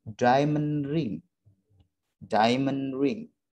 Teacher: maka suara d pada kata diamond bisa kita drop suaranya, ya, bisa kita buang.